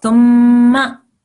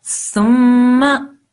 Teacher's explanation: Okay, so just like when we have a noon with a shadda, we have a meme with a shadda, we have to make a slight nasal sound for 2 seconds. So it's thumma. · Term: meme gunna